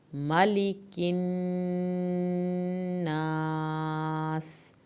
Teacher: میم کی زبر کو لمبا نہیں کرنا، نون کی شد پہ الف کے برابر دیر لگانی، آخر میں سیٹی کی آواز نکالنی ہے۔